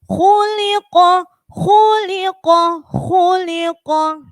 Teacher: Khuliqa sama dengan khuliqa tadi. Khuliqa, kha tebal, lam tipis, qafnya tebal.